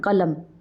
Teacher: اسی طرح جیسے جو ہے جبکہ نون تنوین جو ہے وہ صرف وصلاً پڑھا جاتا ہے، مطلب اب قلمن ہے، قلمن ہے، اب ہم اس کو ساکن کریں تو پھر کیسے پڑھیں گے؟ ہم قلم، میم کو ہم ساکن کر دیں گے، اس نون کو نہیں پڑھیں گے